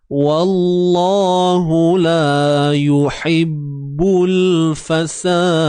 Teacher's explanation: La 2 harakat. Alif mat sebelumnya baris atas.